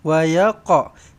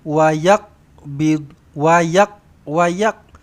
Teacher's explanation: Sepatutnya wa yaqa. Sepatutnya qaf ni kena lantun. Qalqalah sughra.